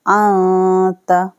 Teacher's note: نون کی آواز کو چھپانا ہے اور ناک میں غنہ کرنا ہے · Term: اخفا